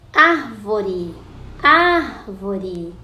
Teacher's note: Quando você chama a palavrinha árvore, a sílaba mais forte é a primeira, é a antepenúltima. Então, ela é proparoxítona.